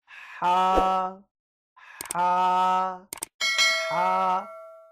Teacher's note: یہ جو ہا ہم پڑھ رہے ہیں یہ حروف حلقی میں سے ہے۔ حروف حلقی ایسے الفاظ کو کہا جاتا ہے، ایسے حروف کو کہا جاتا ہے جو کہ حلق کے اندر سے ادا ہوتے ہیں